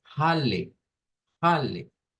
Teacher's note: le metemos el sonido de una J a esa H